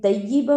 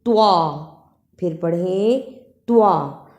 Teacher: طیبًا، اسے طیبًا نہیں پڑھنا، توا اور تا دونوں کی آواز میں فرق ہے. توا موٹی اور جھٹکے والی ہے، توا. پھر پڑھیں توا، پھر پڑھیں توا.